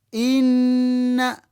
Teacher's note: Kati gwe n'ozaatula nga eringa ennyukuta emu, wabula ojatula nga eggumidde. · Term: idgham